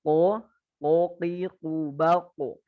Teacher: Kita masuk ke atas sedikit ke ujung pangkal lisan ada huruf qaf dan huruf kaf. Huruf qaf dan huruf kaf berarti ini nempel pangkal lidahnya nempel ke fufula ya. Fufula itu loncengnya kita, lidah yang di atas itu.